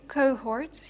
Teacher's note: you have an O followed by an H which is aspirated so actually uh pronounced